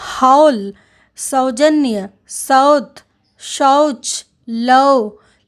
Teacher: औ का उच्चारण कुछ अव और कहीं-कहीं अ और ओ के समान होता है अर्थात ओ और औ के बीच का होता है